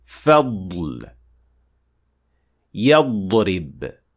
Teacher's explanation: Well, if you pronounce the Dad properly within a word, you'll notice that when leaving the Dad with sukun and moving to the letter after, you will feel some kind of air released from the sides of your tongue, slightly pushing this air to the inners of your cheeks